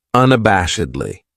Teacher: This adverb has five syllables and the stress is on that third syllable that bash unabashedly. That second syllable has that schwa, that uh sound